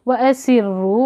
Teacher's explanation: व असिर्रू, वहाँ एक एक हरकत देखें, होंठों को गोल करेंगे, वी नहीं पढ़ेंगे।